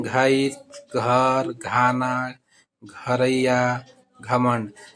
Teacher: है गच्छेक गठर गधा और गर्दन इसी तरह से आते हैं घ का उच्चारण जो है घ जो है महाप्राण है और सघोष है